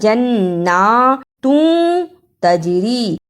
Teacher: تنوین کی آواز کو تھوڑی دیر ناک میں چھپا کر غنہ کرنا ہے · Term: اخفا